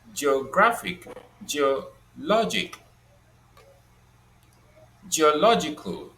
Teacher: we will identify that the stress is on the penultimate syllable.